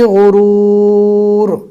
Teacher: غین کو بھی پور پڑھیں گے اور رو کو بھی پور پڑھا جائے گا۔ پور یعنی منہ بھر کر موٹا پڑھنا ہے۔